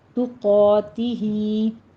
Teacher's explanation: قوف الف قا پر پڑھیں گے، اوپر فتح قائمہ ہے، 2 کاؤنٹ کیجیے، اور ہی میں مد صلہ صغریٰ ہے، 2 کاؤنٹ کرنا ہے۔